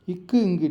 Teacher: இக்கு இங்கு நீங்கள் சொல்லி பார்த்தீங்கன்னா அது கரெக்டாக நாக்கு வந்து முதற் பகுதியோட அன்னத்தை வந்து தொடும்